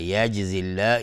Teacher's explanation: كذلك یجزی الله، یجزی الله اینجا باز جیم قلقله میخواد